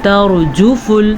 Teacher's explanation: ترجف یہ را جو آپ کو نظر آ رہی ہے، یہ را پر پڑھی جائے گی کیونکہ را ساکن ہے اور اس سے پہلے حرف کے اوپر زبر ہے